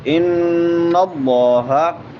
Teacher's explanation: نون مشدد ہے تو یہاں پہ غنہ ہوگا اور ایک الف کی مقدار کے برابر اس کو بھی لمبا کر کے پڑھیں گے.